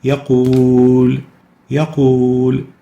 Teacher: We lengthen the waw for 2 units. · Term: natural mad